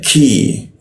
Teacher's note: Ki, nah huruf ki itu di siku tenggorokan lidahnya kita turunkan sehingga rongga udara terbuka ya, ki. Jadi ada hembusan udara ketika membaca ki